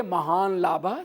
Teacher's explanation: जब अनुनासिक होगा तो लकार भी अनुनासिक होगा